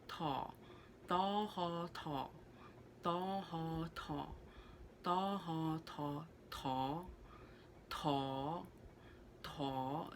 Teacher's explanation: v uh at the end here for the tonal marker is very similar to mandarin third tone because it dips